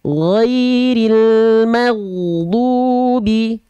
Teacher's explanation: sifat mengalir suara pastikan ketika Gin sukun dia mengalir giril magubi keluar dari ujung tenggorokan mengalir suaranya